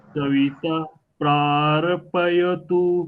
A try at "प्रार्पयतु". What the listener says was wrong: प्रारपयतु ऐसा आ रहा है, प्रारपयतु, तो वो रेफ जो है वो हलंत बोलने का प्रयास करना है। प्रार पयतु, प्रार पयतु ऐसे बोले।